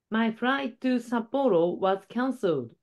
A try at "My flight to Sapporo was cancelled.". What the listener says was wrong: D ▁が 聞 こ え な い 。Cancelled.